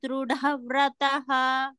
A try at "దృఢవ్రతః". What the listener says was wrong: మళ్ళీ చూడండి, ధ్రువ అన్నప్పుడు దాకి దావచ్చు, అది లేదు, దాకి ఒత్తు లేదు.